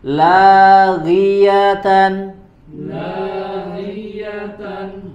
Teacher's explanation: di huruf ghain ketika harokat kasroh maka dia dibaca dengan tipis.